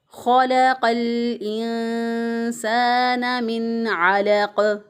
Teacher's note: ख को उसी तरह मोटा पढ़ा, लाम को बारीक पढ़ा और क़ाफ को फिर मोटा पढ़ा। खलक़ल इंसान, लाम साकिन, साकिन हरफ को पीछे वाले क़ाफ के साथ मिला दिया।